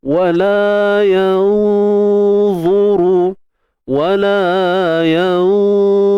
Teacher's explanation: Huruf isti'la dan itbaq pada huruf dha. Jadi proses dengung berlaku secara tafkhim, tebal. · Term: ikhfa haqiqi